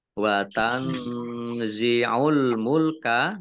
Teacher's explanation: nun sukun bertemu dengan huruf Za bacaan Ikhfa dibaca samar-samar